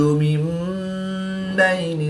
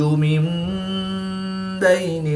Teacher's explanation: نون ساکن کے بعد حرف با ہے تو یہاں پر انقلاب ہوگا، نون ساکن کو میم سے بدل کر غنہ زمانی کر کے پڑھیں گے۔